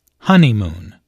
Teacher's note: there are three syllables in honeymoon with a stress on the first syllable